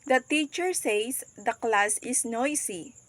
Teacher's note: the sustained juncture here is after the word says separating the reporting Clause from the reported speech